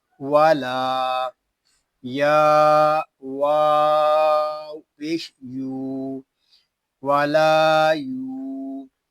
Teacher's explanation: یا کو بھی ہم ایک الف تک کھینچ کر پڑھیں گے، لام پہ الف مدہ ہو رہا ہے اور یا پہ واو مدہ